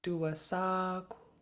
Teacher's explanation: Just make sure you're rounding that K. So round your lips like you're making a W sound and breathe out the K.